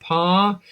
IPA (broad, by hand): pɑː